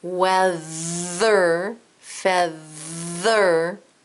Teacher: When you get to that th, it kind of tickles and your tongue vibrates. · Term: voiced th